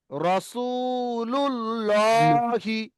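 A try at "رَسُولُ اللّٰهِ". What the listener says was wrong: লা কেন বললেন? আগে পেশ এসছে তো।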